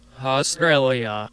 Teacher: I really emphasize those last two syllables more than most people would